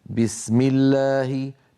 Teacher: بي شديدة مجهورة، هي حرف قوي، الباء قوية جدا لأن فيها شدة، فيها انحباس الصوت والنفس · والفرق بارك الله فيكم بين بي وبي أن بي مجهورة، أب بي، وبي مهموسة، بي مهموسة. فالباء الفصيحة العربية الصحيحة مجهورة شديدة، لا بد من بيان انحباس كلا الأمرين